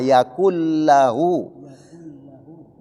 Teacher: Nun mati ketemu dengan huruf lam hukumnya idegam bilagunna. Nun mati tersebut berubah bunyinya menjadi huruf yang didatangi yaitu huruf lam. Idegam bilagunna itu adalah yang tidak didengunkan apabila nun mati atau tanwin ketemu dua huruf ini.